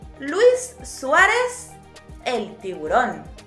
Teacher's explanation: stressing the U in Luis instead of the I, which would be the correct pronunciation